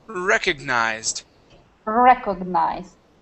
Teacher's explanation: the stress is at the beginning